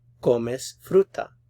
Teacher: there's a little bit of a rising intonation towards the end